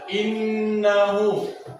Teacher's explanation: Ada 2 hukum tajwid. Pertama, idgham ma'al guna, karena nun bertasdid, cara bacanya ditahan dan dengung.